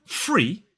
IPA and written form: friː (free)